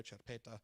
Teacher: the head stress categorically always falls on the second root in situations like this